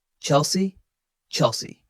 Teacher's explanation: Notice how the second syllable C is light and short.